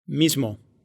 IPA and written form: ˈmiz.mo (mismo)